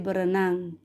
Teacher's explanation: Nah, pelesapan fonem ini adalah hilangnya fonem dalam suatu proses morfologi. Misalnya dalam proses pengimbuhan prefiks ber pada kata dasar renang, maka bunyi R yang pada prefiks ber dilepaskan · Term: pelesapan R